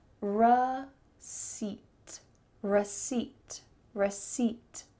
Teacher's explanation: And the P is completely silent.